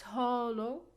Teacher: so because of the o sound we cannot stress it so we will put the stress on the first syllable